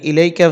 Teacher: এখানে আছে মদ্দে লিন এক আলিফ বা দুই আলিফ টানা যাবে কোন সমস্যা নেই